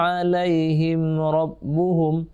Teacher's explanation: Mim mati ketemu ra, tidak boleh dengung.